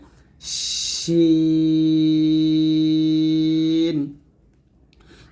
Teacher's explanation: শিন জিহ্বার মধ্যখান তার বরাবর উপর তালুর সঙ্গে লাগিয়ে শিনটা আমরা পাতলা উচ্চারণ করবো বাতাস বের করব